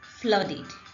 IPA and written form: flʌdɪd (flooded)